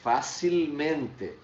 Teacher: Mas vejam bem a minha pronúncia, facilmente. Ele não perde a tonicidade na penúltima.